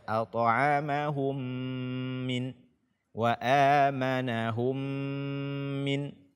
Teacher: idgham mimi dan dia berdengung, kita tahan selama 2 harakat